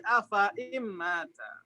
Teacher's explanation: Jadi nunnya diidghamkan bertemu dengan mim idgham ya Ustaz. Jadi bertemu dengan mim sukun.